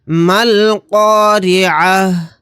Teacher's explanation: آیت کرنے کی صورت میں تا کو ہا ساکن بنا کر پڑھیں گے۔